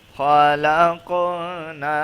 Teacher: خا کے اوپر زبر ہے اور خا یہ موٹا ہے، موٹے حروفوں میں سے ہے